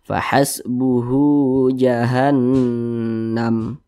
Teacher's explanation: Nah, ini namanya mad silah qasirah, bukan mad tabi'i. Mad silah qasirah namanya. Panjangnya sama dengan mad tabi'i, 2 harokat.